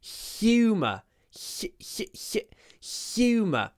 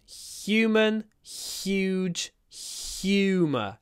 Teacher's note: like this when the H sound is pronounced with our tongue usually H is in the throat but in this word humor we pronounce it with our tongue in our mouth